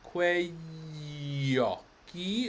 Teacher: It's the y glide, yeah? And it's in the middle of the word, so it's doubled.